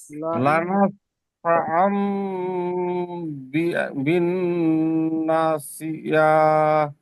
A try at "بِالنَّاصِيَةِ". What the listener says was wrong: সিয়া টান দেবেন না, বিন নাসিয়াহ। লানাসফাআম বিন নাসিয়াহ। এখানে একটা কায়দা আছে, এই কায়দাটা আমি দ্বিতীয়বারে যখন লিঙ্ক দেবো তখন বুঝিয়ে দেবো, কারণ এখানে তানবিন নুন সাকিনের পরে বা এসছে, তাই ছোট্ট মিমের দ্বারা পরিবর্তন করে পড়তে হবে।